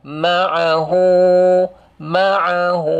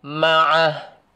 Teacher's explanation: Dia mat, dibaca mat kalau sambung. Baca mat apabila sambung. Kalau wakaf tidak ada mat. Ini disebut dengan nama mad silah.